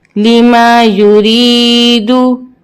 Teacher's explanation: را کو باریک پڑھیں گے کیونکہ را کے نیچے زیر ہے